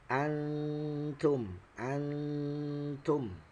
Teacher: Ikhfa. Ya, dan cara membacanya disamarkan antara suara nun dengan ta.